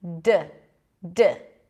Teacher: D is the same. You block the air with your tongue. You release the air, but you're also activating the vocal cords. D, D, D. Okay?